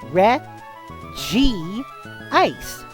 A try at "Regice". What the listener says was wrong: But like it's pronounced Reg Ice in English. Because it doesn't have the two separate I sounds.